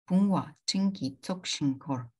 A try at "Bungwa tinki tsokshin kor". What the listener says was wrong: So the thing is that when we're pronouncing it together, what you're doing is you're putting too much emphasis on this, so it becomes bungwa. But it has to be bungwa. So without a pause, bungwa tinki tsokshin kor.